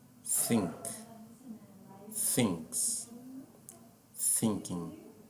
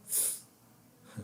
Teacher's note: esse fonema peculiar do inglês, que coloca a língua entre os dentes e dá aquele assoprinho